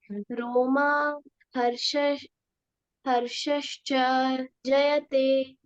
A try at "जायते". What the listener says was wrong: जायते ना, ज में आ की मात्रा है।